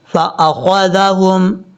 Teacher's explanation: خا حروف مستعلیٰ میں سے ہے، پر پڑھا جائے گا